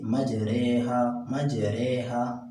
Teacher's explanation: یعنی زبر کو زیر کی طرف مائل کرنا اور زبر اور زیر کے درمیان پڑھنا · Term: امالہ